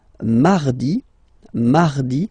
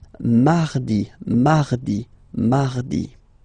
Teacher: So you can hear that you don't pronounce it that strongly, this R.